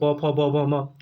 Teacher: ओष्ठ है, दोनों ओठों से ओष्ठ है